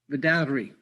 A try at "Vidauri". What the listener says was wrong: You just need to roll your R's a little bit.